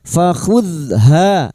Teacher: Jangan dipantulkan ya. Fakhuzha fathah diikuti alif ha dua harakat kita panjangkan